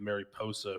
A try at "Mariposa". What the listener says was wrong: Mariposa, not pussy.